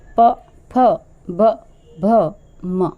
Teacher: स्पर्श कर रहा है प वर्ग प फ ब भ म आप इन पांच अक्षरों का जब उच्चारण करेंगे तो आप अपने दोनों ओष का सहायता लेंगे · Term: दोनों ओष्ठ